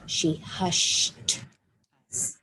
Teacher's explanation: Hush is a whisper sound. I add ed, but I say t. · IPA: /t/